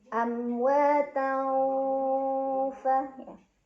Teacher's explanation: tanwin fathah dibunyikan samar-samar ke huruf fa sambil dengung. Nah, karena fa itu maksudnya tidak terlalu dekat dan tidak terlalu jauh dari huruf nun, maka ini samar dan dengungannya seimbang. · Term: ikhfa awsat